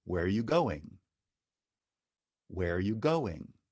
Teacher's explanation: where is the question, but the accent appears at the end of the sentence.